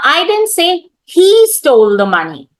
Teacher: I'm laying the stress on he.